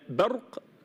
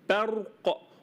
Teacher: ارقق الباء وافخم الراء